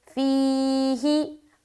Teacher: فیہی یا مدہ کریں گے فی میں، اور ہی کو ہمیں جلد پڑھنا ہے